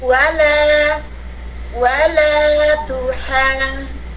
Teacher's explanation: Nah, di sini dia punya sifat tarqiq. Kenapa? Karena huruf lam, huruf istifal. Dibaca tipis, wala, wala tuhan.